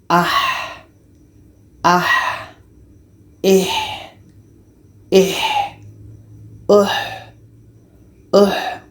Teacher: Alif lagi kita baca ah ih uh ah ih uh jadi Ha ini letaknya di tengah-tengah tenggorokan jadi kita alirkan nafas kita keluar